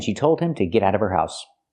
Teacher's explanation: Now we need the Vv sound in of because we don't pronounce the H in her. We link the sounds.